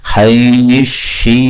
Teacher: sa ketemu shin, ini boleh idgham menjadi haisyitum